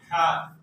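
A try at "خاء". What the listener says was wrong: খ মোটা হবে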